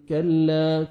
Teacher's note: کاف کو باریک پڑھیں گے, الف مدہ, 1 سیکنڈ لام کو آپ نے کھینچنا ہے